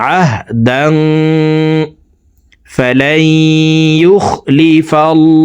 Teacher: এই তানবিনওয়ালা দালটি নাকের ভিতরে লুকাইয়া গুন্নার সহিত পড়ব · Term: ইকফা গুন্না